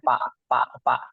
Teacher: kalau orang Sunda itu susah mengatakan huruf fa, dia pasti ngomongnya pak